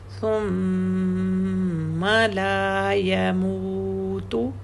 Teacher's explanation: اور ما میم کو الف نہیں ہے جیسے آگے نظر آ رہا ہے نا لا، تو لام کو تو الف ہے لیکن ثم کی میم کو الف نہیں ہے تو الف کا ٹائم نہیں دیں گے